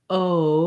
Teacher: your jaw closes and your tongue lifts and relaxes as you say the O diphthong